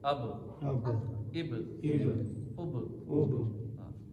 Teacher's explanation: اب یہ با حروف کلکلہ ہے نا، اس لیے آواز لوٹے گی. اب، اب، اب، با پہ آواز لوٹے گی.